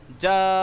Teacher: مد متصل، جیم الف مد زبر جا، حمزہ زبر ا، جا، اس کو ایک الف سے زائد کھینچ کر پڑھیں گے، یعنی جو مد متصل کی مقدار ہے وہ 3.5 الف یا 4 الف کھینچ کے پڑھنا ہے